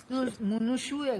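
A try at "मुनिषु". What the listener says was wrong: మునీషు. మునుషు కాదు, మునీషు. ఇకారం ముని, ఇకారాంతం. సార్ ఉకారాంతం అడగలేదు, ముని ఇకారాంతం అడిగారు. నీ నీ నీ ముని. ఈ కాదు, దీర్ఘం లేదు, ముని.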